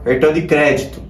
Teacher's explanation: No português, a gente dá ênfase no crédito, então a gente fala cartão de crédito. Já no inglês, quando a gente tem 2 substantivos, né, que é cartão e crédito, juntos, a gente vai sempre dar ênfase no primeiro substantivo, no credit, e nem tanto no card.